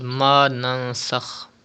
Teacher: The rule ikhfa will be done and gunna will be done in noon sakin.